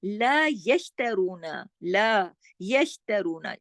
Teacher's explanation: شین کو جماؤ کے ساتھ، یش ہلانا نہیں، کلکلا نہیں کرنا. یشترو، را موٹا، دو حرکات کھینچے گا، واو مدہ ہے.